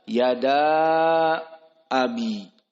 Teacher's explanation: Maka yang panjang di sini hanya matobi'i bertemu dengan hamzah, yada abi. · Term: mad jaiz munfasil